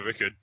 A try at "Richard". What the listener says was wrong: Richard. It's not Rickard. There's an H in there, bud.